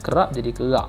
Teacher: Dia K dia tu K yang bunyi letupan kat belakang tu · Okey, seterusnya kita boleh lihat pula perkataan yang berakhir dengan huruf P, itu konsonan letupan dua bibir bunyi digugur dan digantikan dengan huruf K, atau konsonan letupan dan langit lembut yang tidak berbunyi.